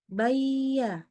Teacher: Biar kata ya, tengah lidahnya naik, tetapi pangkal lidahnya nggak naik. Sehingga dia nggak tebal ya. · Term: istifal